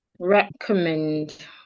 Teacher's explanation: So we're stressing the last syllable men.